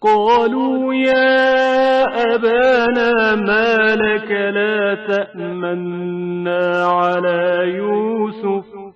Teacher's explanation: اس بات پر توجہ کریں کہ صرف قاف استلا کے ساتھ پڑھا جائے گا، جبکہ بقیہ حروف نازک اور باریک آواز سے پڑھے جائیں گے